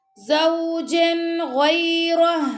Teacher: جیم دو زبر جن کے بعد آ گیا غین، تو یہاں پہ اظہار ہوگا زوجن غیرہ۔ اب ہا کے اوپر جو پیش ہے وہ ہم نہیں پڑھیں گے کیونکہ ہم یہاں پہ چھوٹا سا تو ہے تو اس کی وجہ سے ہم سٹاپ کر رہے ہیں، اس لیے ہا جو ہے نا وہ ساکن ہو رہی ہے۔